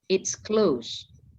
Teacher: kalau nada bicara kalian rendah, terus agak naik dikit, terus turun lagi